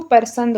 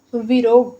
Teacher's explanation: अवधि में अकारण र का आगमन होता है, जैसे पसंद को परसंद बोलते हैं।